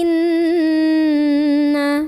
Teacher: ada ghunnah musyaddadah karena ada Nun yang bertasydid cara membacanya didengungkan dulu ditahan kurang lebih dua harokat